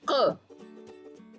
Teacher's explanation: गले से आवाज आ रही है क